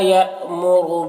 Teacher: یہاں پر حمزہ ساکنہ ہے، جھٹکا لگے گا